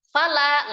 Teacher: la adalah mad thabi'i, dibaca selama dua harakat